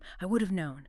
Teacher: >> It's the H sound. >> The H in have just vanishes completely. And the vowel changes, too. >> It's not have, it's UV. · That silent H, that reduction to a schwa sound.